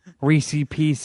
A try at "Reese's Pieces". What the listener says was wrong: you left off the S, both S's. Reese PC.